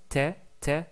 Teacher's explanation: on va plutôt attacher le bout de la langue avec le palais qui est proche des incisifs supérieurs